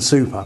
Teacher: If we write put and super, if you put your hand over your mouth when you say put, you should feel a puff of air for the P in put, because it's aspirated. But you don't feel a puff of air for the P in super, because it's not aspirated. Same consonant.